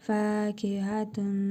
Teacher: İdğam-ı meal qünnə qaydasına görə tənvindəki nun hərfini burnumuzda tələffüz edərək bir əlif miqdarı uzadırıq. Vav hərfini isə şəddəli oxuyuruq.